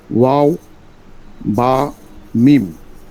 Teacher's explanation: 15 নম্বর মাখরাজ, দুই ঠোঁট হইতে উচ্চারিত হয়।